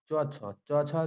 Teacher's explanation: च छ जितना होता है च वाला पूरा तालु से बोला जाएगा